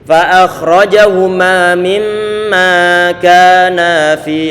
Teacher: Yang ma tadi itu akhrajahuma 2 harokat, kemudian ka dipanjangkan melebihi 2 harokat.